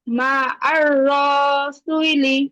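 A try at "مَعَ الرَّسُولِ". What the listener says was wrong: আপু রতে কি টান আছে র টান হয়ে যায় আপু রতে টান নাই, টান তো হবে সিনের মধ্যে। কেন টান হবে? পেশের বাম পাশে জজমালা ওয়াও মাদের হরফ, তাহলে সিন ওয়াও পেশ সু, এখানে টান হবে। মা'আর রাসূলি, মা'আর রাসূলি,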